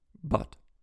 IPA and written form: bɐt (but)